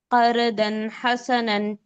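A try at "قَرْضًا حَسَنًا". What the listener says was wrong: यहाँ पे आपका रॉ मोटा होगा, प्रॉपरली अच्छे से देखिए।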